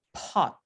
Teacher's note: Entonces, vemos que en inglés, cuando el fonema P ocurre al principio de la palabra pot, tenemos un alófono infiel, un alófono que tiene otras características. Es bilabial, es oclusivo, pero después de ser oclusivo viene seguido por aspiración